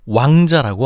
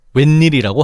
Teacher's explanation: 반모음 오우를 그냥 아주 아주 짧아서 들릴까 말까 한 오우 발음이라고 생각하면 돼